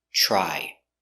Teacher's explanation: you have TR together it makes the CH sound like chicken so together try I tried to fix my computer but I